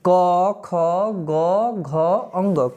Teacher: अकह विसर्ग कंठ। अ आ कवर्ग ह और विसर्ग का उच्चारण स्थान कंठ है।